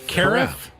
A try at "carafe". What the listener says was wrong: It's not care-if. It's Carafe.